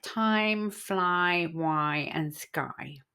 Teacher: you say the sound ah, as in cat, and then you glide really smoothly to the sound I in bits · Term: diphthong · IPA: /aɪ/